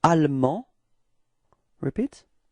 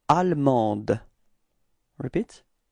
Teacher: the final E in the feminine form only gives you the possibility to pronounce the D